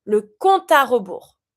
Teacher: And you see here, when it comes to compte finishing with an E, there's no accent, it's mute. But because of my A that follows, I'm going to avoid my E to pronounce my A straight away.